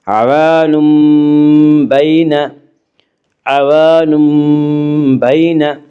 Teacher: یعنی نون ساکن اور تنوین کو میم سے بدل کر غنہ کے ساتھ پڑھیں گے۔ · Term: قلب